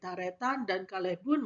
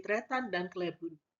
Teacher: untuk yang Sumenep itu terdiri atas tiga silabel ya tetapi ketika di Bangkalan ee menjadi dua silabel ada penghilangan bunyi eh a